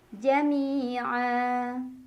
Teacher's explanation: Ada mad iwad karena ada fathah tanwin yang diwaqafkan atau diberhentikan. Maka cara membacanya fathah tanwin diganti fathah saja dan dibaca panjang 2 harokat saja.